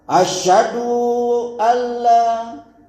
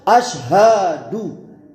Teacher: Sebagian muazin membuang huruf H dan mendobelkan, mentasdidkan Shin pada kalimat syahadat untuk membagusin suaranya, menurut sangkaan dia.